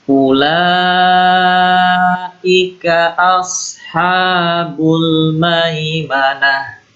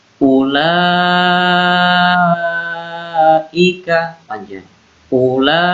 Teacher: Ya, mat wajib ini panjang. Mat wajib yang harus dibaca panjang, 6 ketukan.